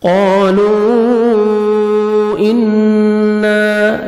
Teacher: نون مشدد غنہ کریں گے، نوز میں ساؤنڈ لے کے جائیں گے، الف مدہ، 1 سیکنڈ آپ نے نون کو کھینچنا بھی ہے۔